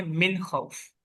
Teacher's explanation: جی، ہم نے اس کو اظہار میں لے کے جانا ہے. جو نون کی آواز ہے وہ ظاہر ہونی چاہیے